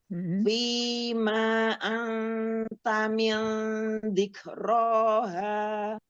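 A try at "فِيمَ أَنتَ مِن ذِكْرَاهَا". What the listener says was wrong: Ma-nya jangan panjang. Fima anta min dzikraha.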